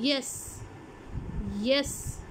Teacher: The front of the tongue is raised close to the पैलेट। For example य, मैं बोलती हूँ यस, यस। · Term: पैलेटल साउंड्स